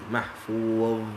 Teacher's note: Dha lidah keluar sikit daripada gigi